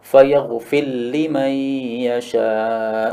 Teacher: ra masuk pada lam karena mutaqaribain sehingga idgham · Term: idgham kabir